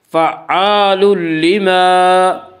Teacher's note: فعال لما، الف مدہ، الف ہمیشہ مدہ ہوتا ہے، الف سے پہلے ہمیشہ زبر ہوتا ہے، الف مدہ کو ایک الف کے برابر کھینچ کر پڑھیں گے